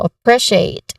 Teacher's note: the stress here is on the second syllable